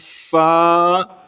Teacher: آپ اوپر کے دانت نیچے والے ہونٹ سے لگائیں گے، اندر والی طرف جو گیلے ہونٹ ہیں وہاں پر، تو آپ کی آواز نکلے گی فا.